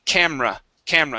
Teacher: when we say the word camera, okay, the E there in the word is actually omitted